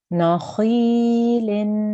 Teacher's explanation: there's a ya mud here, so we need to elongate this sound for 2 seconds. So, nakhilin.